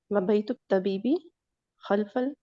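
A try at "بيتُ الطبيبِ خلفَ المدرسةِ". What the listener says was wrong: वाव नहीं लगाइएगा, सिर्फ वाव के बगैर पढ़िएगा ना, वाव नहीं लगाइएगा, सिर्फ बई तो तबीबी खल्फल मदरसती।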